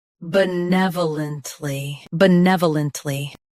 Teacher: Both US and UK have the same pronunciation of this word. Stress nev. Keep b soft and lunt smooth.